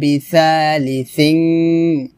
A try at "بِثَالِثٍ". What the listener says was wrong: بثا এটা হবে না, হবে বিথা থা পাতলা হবে, সিং গুণ করতে হবে, بثالث